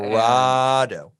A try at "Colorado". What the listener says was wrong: Well, it's an A, so I'm sorry. I'm sorry they don't teach you to read on the East Coast.